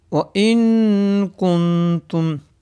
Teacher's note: نون ساکن کے بعد تا آ گیا ہے، یہاں پر اخفاء ہوگا، یعنی گننے کے ساتھ پڑھیں گے